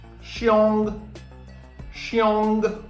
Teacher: what do we do in the third tone falling then Rising